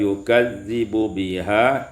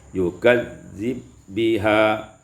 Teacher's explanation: Pada ayat yang ke-43, yukadzibu biha, idghamul ba fil ba, diidamkan ba pada ba maka menjadi yukadzib biha.